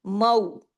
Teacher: इसमें आपके होंठ गोल होके आगे की तरफ निकले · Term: वावे लीन